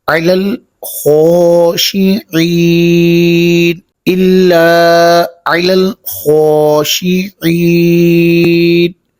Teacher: عین کو واضح کریں گے اور خا کو اوپر پڑھیں گے۔